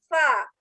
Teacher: Sa itu terletak di ujung dasar lidah.